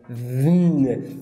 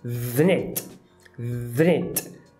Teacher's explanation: Ele pronuncia o TH mais o N sem nenhuma vogal. E logo, esse N vai juntar com o et. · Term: apagamento